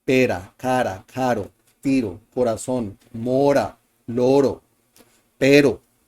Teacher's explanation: The letter R is in between two vowel sounds and sounds the single tapped R.